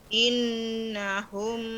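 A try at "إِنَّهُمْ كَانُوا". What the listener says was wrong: Inna, ritmenya agak lebih panjang ya. Innahum kanu.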